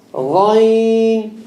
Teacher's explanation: With the ghain, there's no click.